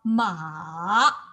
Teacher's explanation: the third tone, make it a turn, but do not start too high